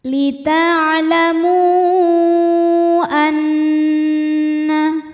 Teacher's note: Sedangkan hamzahnya adalah a terdapat pada kata kedua yaitu anna. Maka mimnya dipanjangkan boleh 4 boleh 5 harokat. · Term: mad jaiz munfasil